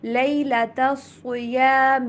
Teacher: احل، ہا کی آواز ہا والی نہیں ہونی چاہیے، احلا نہیں بلکہ احل لکم لیلۃ الصیام. لیلا، دونوں لاموں کو باریک پڑھنا ہے